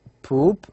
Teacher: this vowel, U, is high, high, and it's also located at the back of the mouth, and it's rounded. The teeth or the lips are rounded.